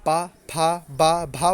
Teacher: जब आप पा फ बा भा बोलते हैं तो आप ओठों का प्रयोग करते हैं